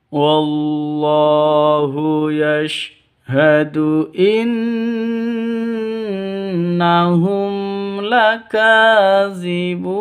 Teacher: Gunah musyaddadah dengung dua ketukan ya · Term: ghunah musyaddadah